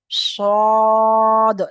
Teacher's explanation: এটাকে আমি সদ বলছি মুখটা গোল করে